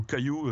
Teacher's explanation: au-dessus de ce qu'on appelle la ligne de Jaurès, le K latin a été conservé et n'a pas évolué en che. C'est pour ça qu'on a aussi des distinguos entre campagne, champagne, etc.